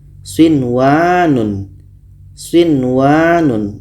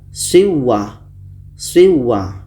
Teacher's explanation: Nun mati bertemu waw dalam satu kalimah. Maka ini izhar wajib. Harus kita baca jelas dan tidak boleh dengung.